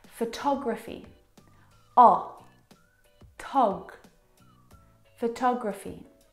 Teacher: Now, if you look at the second example, photography, you can hear the pronunciation is different, and that's because the second syllable is the stressed syllable in this word.